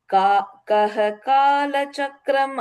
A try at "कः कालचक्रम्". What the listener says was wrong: The third line like kah, just a H sound there, not kaha. Kah kala. Yeah, you just put a H to join.